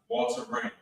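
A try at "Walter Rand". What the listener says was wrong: Ran with a D.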